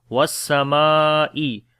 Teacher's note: So wow we connect with the sin was and we make Ham's quality was-samai, and this meme we long due to alif madda because alif is coming after fatha, and also here is a big mad sign because after the alif madda the next letter is hamza, so we make madde muttasil which is madde wajib, and this mad we long 3 to 5 seconds